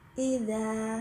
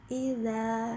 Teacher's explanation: idza tidak usah terlalu panjang dan tidak boleh dipendekkan, jadi hanya 2 ketukan saja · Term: 2 harokat